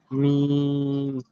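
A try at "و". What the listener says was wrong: এটা মিম নয়, দেখেন ভালো করে।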